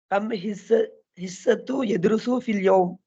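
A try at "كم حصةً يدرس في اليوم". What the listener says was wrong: தூவண்டு வச்சிருக்காங்களா? கம் ஹிஸ்ஸத்தன். நாங்க படிச்சிருக்கிறோம் கம் என்றதுக்கு பிறகு வாரது எப்போதுமே ஹிஸ்ஸத்தன்.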